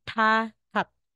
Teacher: pag sa final na hindi na po aspirated